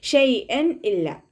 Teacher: തെൻവീനിന് ശേഷം ഇദ്ഹാറിൻ്റെ ലെറ്ററായിട്ടുള്ള ഹംസ വന്നു. അപ്പോൾ തെൻവീനിലുള്ള നൂനിൻ്റെ സൗണ്ടിനെ വ്യക്തമായിട്ട് കേൾപ്പിക്കണം, മണിക്കാതെ ഓതാനായിട്ട് ശ്രദ്ധിക്കുക കേട്ടോ.